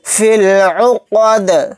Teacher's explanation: دال ساکن ہوگا تو یہاں پر قلقلہ بھی ہوگا · فا کو ڈائریکٹ لام میں ملا دیں گے، یا نہیں پڑھا جائے گا، الف نہیں پڑھا جائے گا، فا ڈائریکٹ لام کے ساتھ ملے گا۔